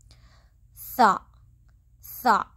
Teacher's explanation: زبان کی نوک اوپر کے درمیانی دانتوں کے کنارے سے، آپ کی زبان تھوڑی سی باہر آنی چاہیے